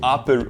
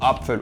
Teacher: On a également la ligne de Speyer qui sépare le /pp/ du /pf/